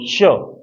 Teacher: अब इधर आ जाओ, ये जो स है ना, सट आपका जो सलजम वाला, ये तालु से बनेगा तो ये तालव्य हो जाएगा, तो ये तालु वाला व्यंजन है। श, जीभ का पिछला हिस्सा ऊपर तालु से छुआ के बोल लो